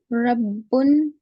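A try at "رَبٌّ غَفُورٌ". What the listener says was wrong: रब्बुन की रा को थोड़ा मोटा पढ़ेंगे. रब्बुन गफूरुन. रा पर जबर ये पेश होता है तो रा को मोटा, भारी, बोल्ड, भारी आवाज से, हैवी साउंड से.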